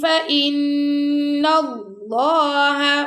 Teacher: فَإِن فَاءُوا فَإِنَّ اللَّهَ، اب یہاں پہ ہم غنہ کر رہے ہیں، نون مشدد آ گیا اور اللہ کی لام کو موٹا پڑھ رہے ہیں